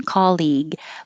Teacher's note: I just kind of hold my tongue in the G position when I'm done